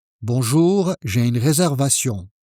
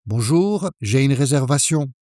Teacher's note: Calm pace, one breath, with a slightly falling intonation.